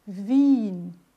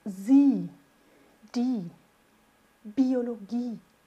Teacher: Vejam que o IE, a gente vai ter o som agora de um I estendidinho.